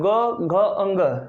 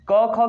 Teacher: इनको बोलने में अधिक मुंह में कंपन उत्पन्न होगा, इसे कहा जाएगा सघोष